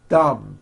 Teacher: My tongue came out, but there was never any air friction. That's not good. You must stretch out the TH sound and hear the air friction.